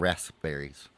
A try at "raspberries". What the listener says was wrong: You don't pronounce the P. Okay. So how do you say KNIFE? But the K's there. But you don't pronounce it.